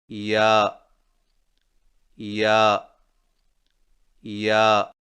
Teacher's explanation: یا کی ادائیگی میں زبان کے درمیان کو تالو کی طرف بلند کرتے ہوئے باریک آواز میں پڑھیں